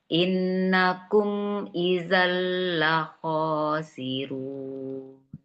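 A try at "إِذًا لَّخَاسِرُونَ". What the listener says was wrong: Makhraj azal ya Bu idzan fi idzan. Innakum idzal la khasirun. Ya, baikin lagi ya makhrajnya.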